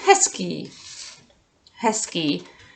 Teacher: I'm saying hezký, S instead of Z. I am saying S.